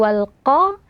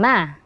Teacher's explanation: tebalkan qaf: walqo, dan encerkan mim. Ma, walqoma.